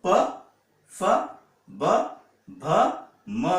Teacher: ये बोलने के लिए हमें ओष्ठ, ओष्ठ मतलब होठों की जरूरत होती है, तो होठों की सहायता से हम ये व्यंजन बोल पाते, इसलिए उनका प्रोनाउंसिएशन प्लेस है ओष्ठ।